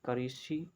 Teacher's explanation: इसका उच्चारण स्थान होता है मूर्धन्य